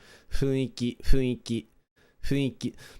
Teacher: it's F without putting your teeth on your lips.